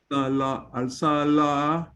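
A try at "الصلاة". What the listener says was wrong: This should be a double vowel. Salah. Salah. This is a ta marbuta at the end of a letter.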